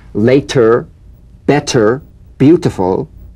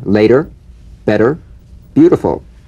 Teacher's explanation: the medial T becomes a soft D all right not a complete D but it goes toward a d